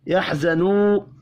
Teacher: واو مدہ ہے، 1 الف کے برابر کھینچ کر پڑھنا ہے، وقف کی صورت میں نون ساکن پڑھیں گے۔